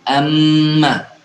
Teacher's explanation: ketika dia hidup ataupun mati, intinya hurufnya bertasydid, maka kita tahan 2 harokat